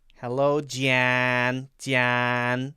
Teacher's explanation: There's definitely more nasally. There's a lot of air coming through the nose. When I would say John, John, a lot of it's happening in my mouth, but if I make more air go through my nose and stretch my mouth wider, then it sounds like Jan, Jan.